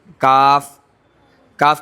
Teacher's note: قوف کے مخرج سے تھوڑا منہ کے اندر باہر کی جانب ہٹ کر کاف. کاف کاف کے اندر باریکی ہوگی.